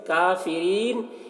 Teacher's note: यहाँ पर रा को बारीक पढ़ेंगे क्योंकि रा के नीचे ज़ेर है। यहाँ पर नून का ज़बर सुकून से बदल जाएगा तो यहाँ पर मद्दे आरिज़ वक्फ़ी होगा।